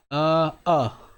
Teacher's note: जीभ ना तो आगे आगे सरक रही है ना पीछे हटती है मध्य में रहती है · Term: मध्य स्वर